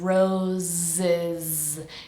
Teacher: make sure both of these s's are pronounced like a z vibrating sound